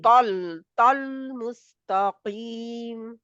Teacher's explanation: तौल ता मोटा है क्योंकि इसमें सारी सिफात मोटी हैं